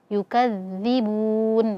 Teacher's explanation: ujung lidah ee bertemu dengan ujung gigi seri atas. Nah, sehingga ujung lidah kita ee agak sedikit keluar ya. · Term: Dzal, zal